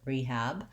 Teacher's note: We use a clear E vowel, and we say the H sound, rehab. Our A vowel, the black cat vowel, is what the second syllable has